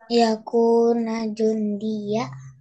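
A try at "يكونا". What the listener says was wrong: Yakunanya pendek apa panjang? Ah, jawabannya harus panjang. Ya kuna, nanya harus panjang nih yang di sini nih, perhatiin masing-masing.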